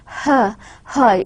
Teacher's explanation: fricative, voiceless as well as glottal, that is a hat, because in glottal sound the back part of our mouth is involved, mouth cavity back part is involved.